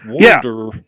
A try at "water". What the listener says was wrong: Yeah, you got to curl your tongue for the R. That's what I mean. Like, it's lazy. It's water. Yeah, like, just be like, yeah, and not pronounce it. It's just lazy.